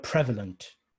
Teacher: prevalent would be correct you stress on prev